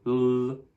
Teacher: Instead of just saying l, you say l, you dwell on it for a bit longer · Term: double consonants